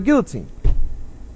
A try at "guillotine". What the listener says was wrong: Yeah, I mean, it's a valid We pronounce L here in America. Still an L.